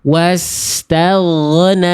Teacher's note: Udah nggak ada nafas tuh huruf ghoin saya.